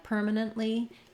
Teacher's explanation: So by that stop T, I mean in a word like permanently, you're not really going to hear that T coming out